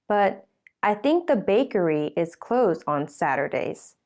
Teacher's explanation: the bakery is new information because this is the first time anyone has mentioned it so bakery has a falling tone